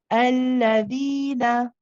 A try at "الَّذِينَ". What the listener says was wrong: You just prolong the la a little bit. Alladhina.